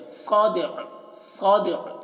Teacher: کو باریک، ذات الصدع، صاد کو موٹا کر کے پڑھنا ہے، دال میں قلقلہ اور عین کی آواز کو ظاہر کرنا ہے وقف کی صورت میں